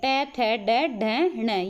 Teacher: ये अगले भाग से आवाज़ आ रही है, यानी कि मूर्धा से आवाज़ आ रही है, तो ये कौन से हो गए? मूर्धन्य हो गए।